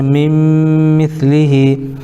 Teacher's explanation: من مثلہ نون ساکن کے بعد حروف یومن میں سے میم آ رہا ہے اس لیے ادغام یرملون مع الغنہ ہوگا, اس کو ادغام ناقص بھی کہتے ہیں.